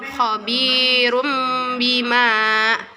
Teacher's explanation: nun mati atau sukun bertemu dengan huruf ba ya membacanya berubah menjadi huruf mim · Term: iqlab